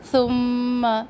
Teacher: سا کو نرمی سے ادا کرے، میم مشدد غنہ ایک الف کے برابر